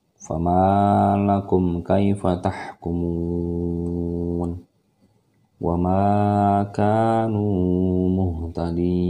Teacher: Mim mati bertemu dengan seluruh huruf hijaiyah selain huruf mim, maka dia hukumnya adalah izhar syafawi atau mim yang harus dibaca dengan jelas, yang tidak ada dengungan, tidak boleh juga ditahan-tahan, sama seperti alif lam qamariyah.